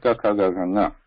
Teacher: the sthanam or the position for this pronunciation is throat, kantha